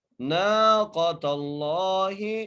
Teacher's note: لفظ اللہ موٹا کر کے پڑھتے ہیں، رسول اللہ، ناقۃ اللہ، نون کو ایک الف مدار کھینچ کے پڑھنا ہے، قاف کو موٹا کر کے پڑھنا ہے